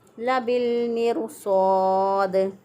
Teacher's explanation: अलिफ अपने माक़बल के ताबे होता है, इसलिए हमने इसको पढ़ा लबिल मिरसाद, लबिल मिरसाद। दाल वक़फ़ की सूरत में साकिन हो जाएगा तो इस पर कलकला करेंगे